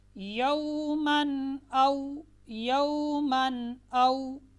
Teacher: بغیر غنہ کے ظاہر کر کے واضح کر کے پڑھیں گے۔